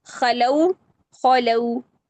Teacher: خا فتحہ کے ساتھ تفخیم کا دوسرا درجہ ہے